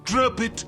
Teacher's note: the letter p from drop simply links to the next word which started with a vowel it and that resulted in the sound we heard from mr burns